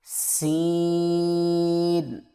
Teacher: یہاں پر آپ کی سیٹی کی آواز ہونی چاہیے، اس کو ثا کی طرح نہیں پڑھنا